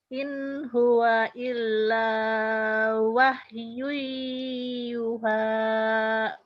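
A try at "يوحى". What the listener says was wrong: Tinggal dikit lagi, yu-nya panjang. Yuha lagi.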